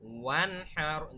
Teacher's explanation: দেখেন নুন সাকিনের পর হা আসছে, কোনো গুণনা হচ্ছে না। ওয়ান হার, আমরা কিন্তু ওয়াং হার বা ওয়ান হার এরকম বলি নাই, বলেছি ওয়ান হার, খুব স্পষ্ট একদম ডিরেক্ট। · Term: ইজহারের